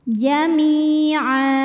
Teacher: Sebab ada huruf ain dengan baris fathah tanwin. Maka cara bacanya fathah tanwinnya jadi fathah, jadi a, dan kita panjangkan 2 harokat. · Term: mad iwad